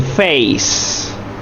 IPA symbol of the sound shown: eɪ